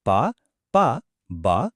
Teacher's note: Simple action కదా రెండు పెదాలు కలవడం అంతే ఈ యూనిక్ సౌండ్స్ పుడతాయి. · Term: ఓష్ట్యం, ఓష్ఠ్యం